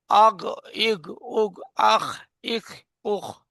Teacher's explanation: আর গইন খ গলার শেষ ভাগ থেকে